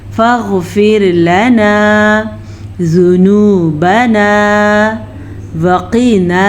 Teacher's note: ज़ाल के ऊपर पेश है तो पेश को हम लंबा नहीं करेंगे, जबकि हमारे पास वाव मद्दा है ये, तो हम इसे खींच के पढ़ेंगे